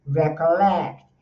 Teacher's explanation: O stress está no lect.